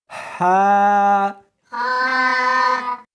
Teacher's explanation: اس کو حلق میں سے نکالنا ہے اور ساتھ میں ہوا بھی ہونی چاہیے، ہا۔ ہا نہیں پڑھنی بلکہ اس کو حلق میں سے نکالنا ہے، سینے میں سے نہیں نکالنا، ہا۔